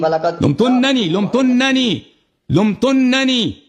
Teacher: تو ہم نے نون کو تشدید دیا, نون پہ غنہ بھی کرنا ہوتا ہے